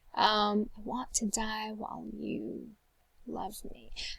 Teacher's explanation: I definitely hear love as being stressed